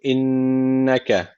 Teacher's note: Şeddel nun var. Mutlaka bir elif tutuyoruz.